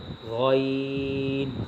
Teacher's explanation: 3 নং মাখরাজ হলকের শেষ হইতে উচ্চারিত হয়